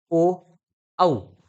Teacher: कंठ आणि ओठ यांचा वापर त्या ठिकाणी होतो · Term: कंठोषठ